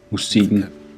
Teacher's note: Listen to how the K sound disappears in Danish.